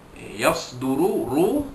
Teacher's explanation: ra itu baris depan dibaca tebal tafkhim